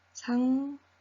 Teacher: 이응 자리에 니은이 들어갔습니다. 니은 첨가 있습니다. · 니은 첨가 있습니다. 상닐에서 보면 이 기역 시옷이라는 이중 받침이 이응이라는 소리로 바뀌어 버렸네요. · 시옷이 탈락되었고요. 남아있던 기역이 무엇으로 바뀐 걸까요? 이응으로 바뀐 겁니다. 뒤에 있는 니은 때문에, 즉 비음화가 일어난 거죠. 자, 따라서 이 상일에 나타나는 음운변동 현상은 자음군 단순화 있었고요.